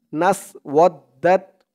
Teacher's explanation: আর এই দালের উচ্চারণটা একদম নরম পাতলা করতে হবে, জিহ্বার মাথা ওপরের দাঁতের মাথার সাথে লাগবে দালের উচ্চারণ করার সময়